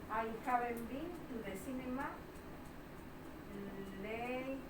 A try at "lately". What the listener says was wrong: Vale, esta E me la como. La E esta me la como. Late. Lee.